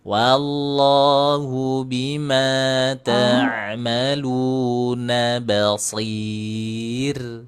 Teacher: Kalau huruf shnya tetap tebal, tapi huruf rnya ti tipis. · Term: roknya tipis